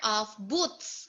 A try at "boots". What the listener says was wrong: Boots. Boots. Oh, pronounce the letter T.